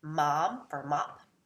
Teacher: a non-nasal is changed into a nasal, so mom for mop. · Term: Nasal assimilation